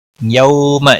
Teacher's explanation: یوم یو واولین ہے تھوڑا نرمی کے ساتھ کھینچ کر ادا کریں گے